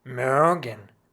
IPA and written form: ˈmøːɡən (mögen)